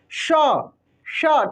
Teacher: तो ये जो है तालू से इसका आवाज सट कर आएगा ये जो आपका जीभ है जाकर कहां सटेगा तालू में जाकर सटेगा · आप जब तालव्य श का उच्चारण करेंगे तो ये जो है तालु से इसका आवाज सट कर आएगा।